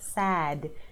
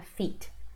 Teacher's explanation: So words with D are longer with the vowels